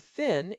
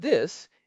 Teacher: Take the English TH sound. In the word thin, it is unvoiced. Your vocal cords do not vibrate. In the word this, it is voiced. In standard English, we use the same two letters for both, but in the IPA, they are distinct.